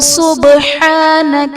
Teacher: سبحانک میں با حرف قلقلہ ساکن ہے تو یہاں پر قلقلہ خوب ظاہر کریں گے۔